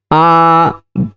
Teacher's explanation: बड़ा आ बोलने में जो समय लगा उसको कहते हैं दो मात्रा काल